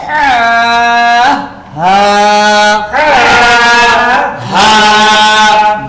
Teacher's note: হা হলকের শুরু হইতে সহজ আওয়াজে